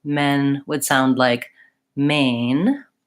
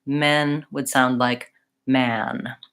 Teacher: So, as I said, when I'm trying to say the vowel my two main errors are, number one, I might be too tense, and so men would sound like main, or I might be too open, men would sound like man